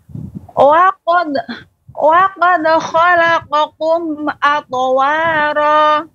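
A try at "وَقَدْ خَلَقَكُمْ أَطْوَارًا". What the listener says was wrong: Yang kedua, kum. Khalaqakum. Wa qad khalaqakum. Kaf. Lebih jelas lagi untuk kafnya. Qa ini memang qaf yang pertama. Wa qad khalaqa. Yang kedua, kum. Nah, demikian. Wa qad khalaqakum atwara.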